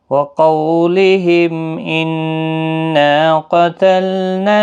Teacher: وقولهم، قاف حروف مستعلیہ ہے، پر پڑھا جائے گا، قولین بھی ہے، میم ساکن کے بعد حمزہ ہے، اظہار شفوی ہوگا، نون مشدد پر غنہ ہوگا، نا الف مدہ بھی ہے، ایک الف کی مقدار کے برابر کھینچ کر بھی پڑھیں گے۔